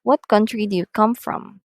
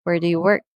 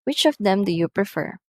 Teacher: the last words on each of these statements here are using falling intonation